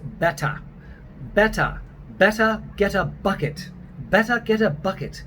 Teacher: And so the ER almost becomes an open A, a round A.